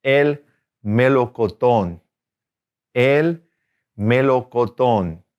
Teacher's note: Accent on the last O.